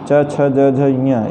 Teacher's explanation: च छ ज झ ञ इसका उच्चारण स्थान तालु है